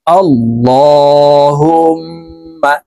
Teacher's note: ইহা তাসদীদ ওয়ালা মিমের সাথে গুন্নাহ করে পড়ব